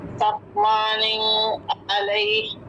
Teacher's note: تنوین کے بعد عین ہے. اظہار